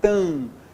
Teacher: Olha só, mesmo nível, tam. Ó, só nasalizei a vogal anterior